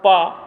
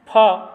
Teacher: ओष्ठ में पा अघोष अल्पप्राण है, फा अघोष महाप्राण है।